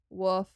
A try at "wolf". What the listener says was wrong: A werewolf. Because who needs all the letters and words when you're from the South? The L is literally not silent. It's wolf.